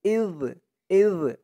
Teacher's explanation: জালের উচ্চারণটা কিন্তু একদম নরম পাতলা হবে।